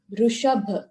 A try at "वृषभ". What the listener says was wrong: Not Rishabh, Rishabha. the sound is different, therefore it will be different anta. Rishabh, when you say, it becomes Ukaranta. Rishabha.